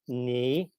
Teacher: and it docks onto the syllable of the preceding word and the end result is a low rising tone